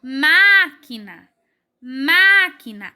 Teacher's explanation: a primeira sílaba é a mais forte no caso é a antepenúltima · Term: sílaba mais forte